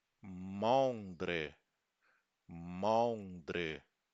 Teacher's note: ou seja, um e fechadinho